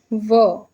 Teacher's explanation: व का उच्चारण आप करेंगे व तो कहीं ना कहीं आपके जो दांत है वो होठ से आपके लगेंगे। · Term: दंत्योष् व्यंजन